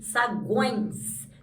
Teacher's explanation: o E aqui, na verdade, ele está com som de I, saguões. Então, quando o E tem som de I, ele funciona como uma semivogal.